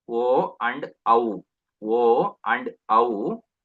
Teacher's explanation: They are produced from kanta and oshtam, means throat and lips.